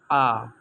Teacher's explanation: जब आ बोलते हैं तब जीभ का मध्य भाग का यूज किया जाता है बिना जीभ के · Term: मध्य स्वर